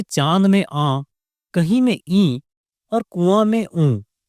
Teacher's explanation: अनुनासिक का मतलब है नाक के साथ। जब इन स्वरों को बोलते हैं तो हवा मुंह और नाक दोनों से बाहर निकलती है। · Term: अनुनासिक स्वर